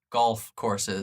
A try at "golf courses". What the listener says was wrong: Oh, It sounded like you were saying it like golf, like the Gulf of Mexico, but golf.